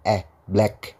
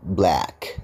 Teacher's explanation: e tapi agak ke a e e-nya mangap banget